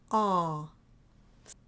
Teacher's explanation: it's like an ah, but it's nasalized a little bit.